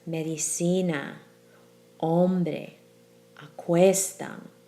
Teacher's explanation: that spoken stress is clearly on the second to last syllable